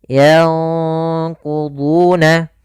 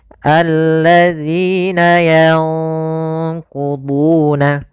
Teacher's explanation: Sedangkan ikhfa itu nunnya disamarkan kepada huruf qaf. Dan qaf termasuk huruf yang tebal, maka ikhfanya juga ikhfa yang kita tebalkan